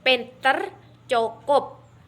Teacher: huruf P merupakan kontoid plosif bilabial, tak bersuara dan tak beraspirasi